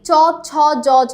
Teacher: কোন ব্যঞ্জন ধ্বনি বর্ণসমূহের উচ্চারণ স্থান অগ্রতালু, সামনের তালু দিয়ে আমরা উচ্চারণ করছি কি চ ছ জ ঝ, আমাদের সামনের জিভের সম্পূর্ণ অংশটা লাগছে, ঠিক আছে, তালুতে, চ ছ জ ঝ। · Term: তালব্য ব্যঞ্জন